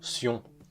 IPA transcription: sjɔ̃